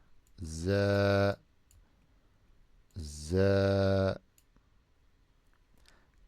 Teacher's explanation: The za with Fatha is za. And the alif makes it longer.